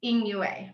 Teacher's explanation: Instead of, as you might predict, that it would be 2 fourth really sharp tones, the first fourth tone actually is a rising tone, so that makes it easier to say when you say the second fourth tone.